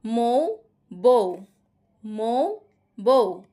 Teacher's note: উটা পুরোপুরি উচ্চারিত হচ্ছে, এটা পূর্ণ স্বরধ্বনি, এবং এখানে উ এটা পুরোপুরি উচ্চারিত হচ্ছে না, এটা হচ্ছে অর্ধ স্বরধ্বনি, দুইটা মিলে হচ্ছে দ্বি স্বরধ্বনি